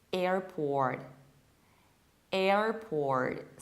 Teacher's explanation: Whereas in American accent, we pronounce it like airport, airport. So we have a very flattened American A. Then we have R, which is very articulate and juicy. And then we pronounce final R from port, contrarily to the British accent.